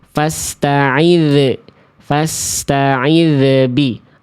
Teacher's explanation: bunyi dalnya memantul, ada pantulan, ada bunyi ze di ujung pelafalan